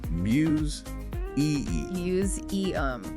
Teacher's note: Museum has that voice Z sound in the middle.